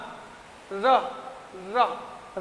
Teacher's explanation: र जब बोलते हैं तो वो मसूड़े को छूते हुए दांत तक आता है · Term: लुंठित व्यंजन